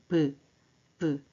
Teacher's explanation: 두 입술 사이에서 나는 소리 브. 여기가 자음이 소리 나는 위치예요. · 두 입술에서 막힙니다. 입술이 붙어 떨어지죠.